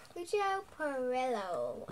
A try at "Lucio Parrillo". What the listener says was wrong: Yeah, you've got to work on your rolling R's, and I've got to shut up now.